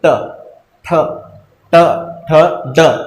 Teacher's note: अब पाएंगे कि जुबा जो है वो उल्टी होकर आपके जो कहाँ लग रही है, मसूड़ वाले साइड में। जैसे बेल बजाते हैं ना अपन, तो वैसे जुबा अपने वैसे टकराती होगी, जैसे ट ठ ड।